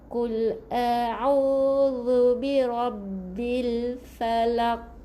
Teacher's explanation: jadi dia punya Qalqalah Qalqalah yang lebih nyaring qolqolah kubro